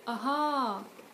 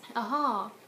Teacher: you stressed the last syllable instead